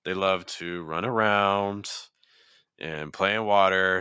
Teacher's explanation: we kind of have this kind of elongated list kind of sense with the rising intonation